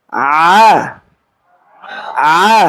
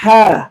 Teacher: যে আইন উচ্চারণের সময় লিসানুল মিজবার, অধিজিহ্বা কণ্ঠনালী পিছনের অংশের সাথে মিলে যায়। আর হা উচ্চারণের সময় লিসানুল মিজবার, অধিজিহ্বা কণ্ঠনালী পিছনের অংশের সাথে মিলে থাকে না।